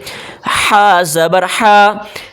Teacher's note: بڑی ہا ہے، حلق سے آواز نکالیں